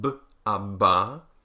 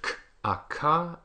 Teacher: A you'll notice that the voiceless ones P T and C are all aspirated meaning that there's a big puff of air that comes out